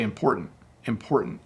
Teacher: as I say the word quickly, I soften the T sound.